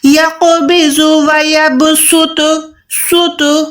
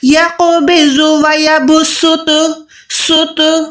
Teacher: منہ کو باریک، سین کو باریک رکھنا ہے یعنی منہ کو گولائی نہیں کرنا۔